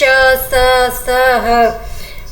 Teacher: ईशत विवृत, जब मुख थोड़ा खुलता है, जैसे श, स, ह